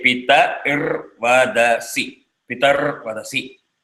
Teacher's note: And Ir gets half a matra.